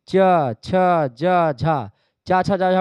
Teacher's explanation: बोलने में क्या होता है तालू का प्रयोग होता है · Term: तालव्य ध्वनियां